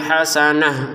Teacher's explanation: kita baca hasanah menjadi huruf ha karena berhenti